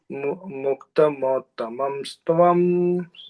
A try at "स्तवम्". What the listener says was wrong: आहा, सत्वं नहीं स्तवम् उत्तमोत्तमं स्तवम्